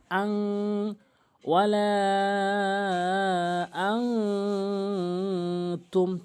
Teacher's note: ওয়ালা, হামজা নুন জবর আন, অনেকেই আন উচ্চারণ করে ফেলে, বলতে হবে আং, নাকের ভিতর নিতে হবে আং।